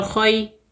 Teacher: خا یا صبر خوی، یا لین ہے، نرمی اور جلدی کے ساتھ پڑھیں گے